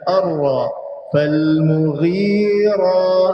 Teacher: Jadi kena ada elemen angkat hujung lidah pada langit-langit keras bahagian depan pada huruf arra.